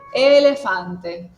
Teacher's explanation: Si lo digo en español es elefante, pero en italiano acentuó la primera, que en este caso sería la e